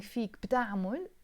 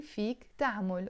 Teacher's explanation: always after فيك, which means you can, we drop the b. So instead of saying فيك بتعمل, we say فيك تعمل or فيك تعمل.